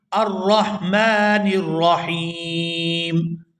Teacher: یہاں پر بھی وقف ہو رہا ہے اور وقف کی وجہ سے یہاں پر مد عارض ہو رہی ہے، تو یہ جو مد عارض ہے یہ تمام مدات سے زیادہ اس کو کھینچ کر ادا کیا جائے گا